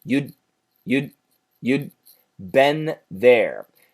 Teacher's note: the N cancels the TH, but in the TH place, we add an extra N sound